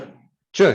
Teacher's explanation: So it's palato alveolar, africada, sorda.